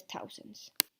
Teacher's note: la TH se pronuncia como una T